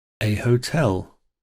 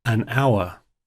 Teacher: in hotel the word has a harder h to it and in our it's got a vowel sound to it